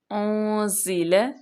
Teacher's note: زا پہ سیٹی کی آواز آنی چاہیے